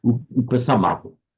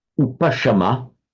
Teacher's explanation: Same in Pali, just a sa instead of a sha.